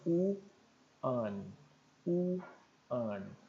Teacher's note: one, apesar de começar com O, ele tem som de W, de U, consoante. Seria um som de W, né?